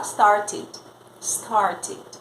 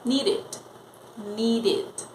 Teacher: quando o verbo na forma base já termina com o som de D ou T, você não precisa pensar se vai ser D ou T. Ele vai terminar obrigatoriamente com o som id. · quando você acrescentar o ed, ele vai ter um som de id.